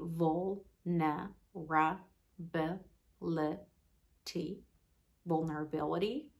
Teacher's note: in the word vulnerability the stress is on the fourth syllable